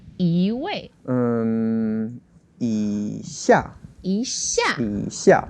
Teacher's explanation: When the second word is the fourth tone, then the first yi becomes the second tone.